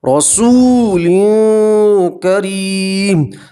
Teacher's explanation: تنوین کی آواز کو آپ ناک میں چھپا کر گننا کے ساتھ پڑھیں گے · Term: اخفا